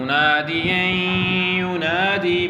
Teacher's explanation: تو یہاں پر ادغام ہے اور ساتھ غنہ ناقص ہو رہا ہے